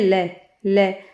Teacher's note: ऐसा लग रहा है बगल में से जीभ के दोनों तरफ से हवा बाहर निकल रही है · तो पार्श्व का अर्थ है बगल, और जिस व्यंजन के उच्चारण में श्वास या सांस जीभ के दोनों पार्श्व या बगल से निकल जाती है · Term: पार्श्विक व्यंजन